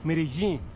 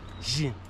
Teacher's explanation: with the double L acting as a consonant that's between the J and the Z